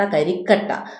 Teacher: അവിടെ കരി അധികം കട്ട, കട്ട എന്ന് പറയുന്ന ഉത്തരപദത്തിൽ ആദ്യ വ്യഞ്ജനമായ ക ഇരട്ടിക്കുകയാണ് ചെയ്യുന്നത്. അപ്പോൾ അവിടെ ഇരട്ടിപ്പ് വന്നതുകൊണ്ട് അത് ദ്വിത്വമാണ്.